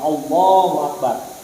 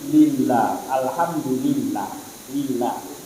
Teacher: Tafkhim tebal seperti lafzul jalalah Allahu Akbar. Tapi tarqiq tipis seperti lillah, alhamdulillah, lillah tipis.